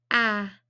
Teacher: Is it vibrating or not vibrating? So is it voiced or unvoiced? Ah. It's vibrating, so it is voiced. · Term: ah sound